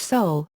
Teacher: a close-mid back rounded vowel similar to General American English sole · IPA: /o/